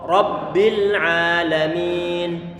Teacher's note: Ra-nya difatahkan maka perlu untuk dibaca tebal